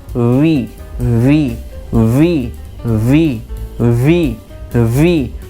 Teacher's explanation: ये नीचे वाला जो लिप्स है, इस पर नीचे वाले लिप पर ऊपर वाला दांत आएगा